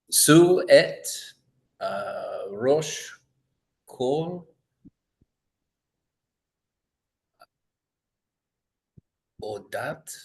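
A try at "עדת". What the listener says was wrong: It's not an O, it's an A. Adat.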